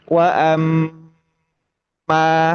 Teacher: Wa amma di sini ada mim tasdid. Mim tasdid itu mesti dibaca lama, ditahan lama.